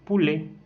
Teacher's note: Elle est fermée, arrondie et orale.